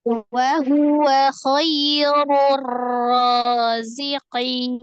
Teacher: Ro doma itu dibacanya tafkhim tebal, kemudian bertemu dengan alif lam syamsiah. Ro itu adalah salah satu huruf syamsiah ya.